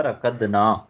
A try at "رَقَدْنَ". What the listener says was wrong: ہاں رقدنا نا لمبا نہیں کرنا، رقدنا. اچھا لمبا کریں گے تو کیا بن جائے گا؟